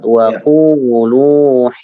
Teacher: ku-nya 2 harokat, lu-nya juga 2 harokat